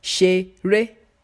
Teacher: This word has two syllables. The first syllable has no accent, therefore it is pronounced as Re. The second has an upward accent, therefore is pronounced as Mi.